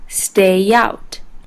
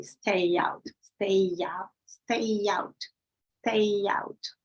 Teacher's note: word begins with the vowel the two words are linked with a ya sound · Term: linking words with ya